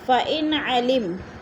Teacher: نون ساکن کے بعد عین آ گیا حروف حلقی میں سے تو ادھر اظہار ہو رہا ہے